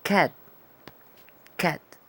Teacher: Es como una A más sonriente.